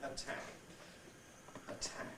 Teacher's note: in the word attack or the word appear you get aspiration